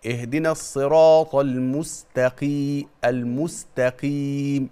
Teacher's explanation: القاف المكسورة دي أدنى مرتبة في التفخيم، بس حضرتك ما تخليهاش كاف